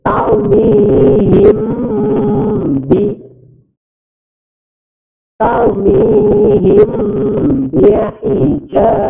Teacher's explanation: Ada kata tarmihim, mim masli atau mim sukun bertemu dengan ba, itu namanya ikhfa syafawi. Bacanya dengung.